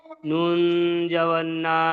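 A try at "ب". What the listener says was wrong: নুন নয়, এটা নিচে নোক্তা আছে, নিচে নোক্তা আছে, বা।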